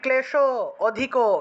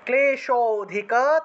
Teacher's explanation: করলে হবে না ক্লেশ অধিক এরকম বললে হবে না এই যে ক্লেশ উচ্চারণ করার সাথে সাথে যে একটা অ চলে আসছে সেই অটাকে এখানে টান দিয়ে উচ্চারণ করতে হবে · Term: লুপ্ত অ